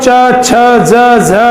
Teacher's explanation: इचु यसा नाम का मतलब ई, च वर्ग, य और स, इनका उच्चारण स्थान तालु होता है